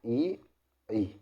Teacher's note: है हमारे ई और बड़ा ई निकाल के देखो ई ई तो हमारे तलू से आवाज निकलती है